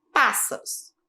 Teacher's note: Qual é a sílaba mais forte? A sílaba pás.